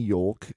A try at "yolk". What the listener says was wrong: There's an L in there. Yolk has an implied L that you have to imply it.